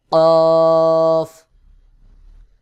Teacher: জিহ্বার গোড়া তার বরাবর উপরের তালুর সঙ্গে লাগাইয়া উচ্চারণ হবে